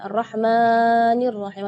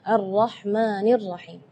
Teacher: tidak boleh lebih madnya dari 2 harakat